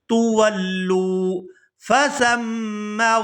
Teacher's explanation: یہاں لام کو واو ساکن کے ساتھ ملائیں گے تو کھینچ کر ادا کریں گے